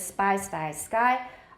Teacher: They are unaspirated, but they are never voiced.